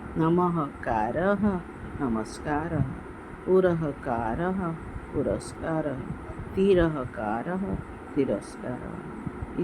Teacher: ऐसे ही क्रिय धातु के परे रहने पर नमः, पुरः या तिरः, ये जो शब्द है इस स्थान पर यहाँ पर दंत्य स हो जाता है, आधे स। नमः कारः, नमस्कारः, पुरः कारः, पुरस्कारः, तिरः कारः, तिरस्कारः।